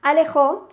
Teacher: Alejó, si la dividimos en sílabas, tenemos la A, tenemos le y tenemos jo. Y el golpe de voz, es decir, la sílaba tónica, la hacemos en jo